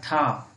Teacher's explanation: आपका जो ठा वर्ण है वो आपके मूर्धा से निकल रहा है